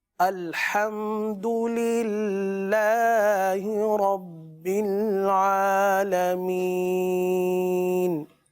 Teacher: رب العالمین میں را کو پر پڑھیں گے.